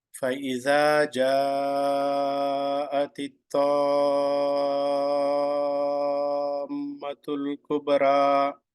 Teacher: This phrase I put it here because of Iza 2 units, Ja 4 units, Tamma 6 units.